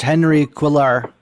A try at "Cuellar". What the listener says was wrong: Cuellar. It's Cuellar, though. The L's like to fool you in the Spanish.